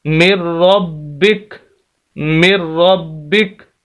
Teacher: کاف کو ساکن کر دیں گے، زبر ختم ہو جائے گی